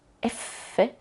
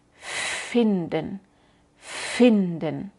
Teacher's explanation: cuando decimos f en este momento F no usamos la voz